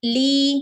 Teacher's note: ലീ ലാമിന്റെ കൂടെ യാ മദ് വന്നിട്ടുണ്ട് കേട്ടോ, രണ്ടനക്കം നീട്ടി കൊടുക്കണേ.